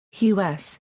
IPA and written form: huːs (house)